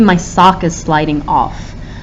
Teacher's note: notice how we put more emphasis on off